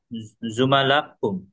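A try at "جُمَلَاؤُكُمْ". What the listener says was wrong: না, উকুম হবে উ। হ্যাঁ, এখানে একটা পেশ ধরতে হবে এই হামজা উপরে। জুমালা উ, এখানে একটা পেশ।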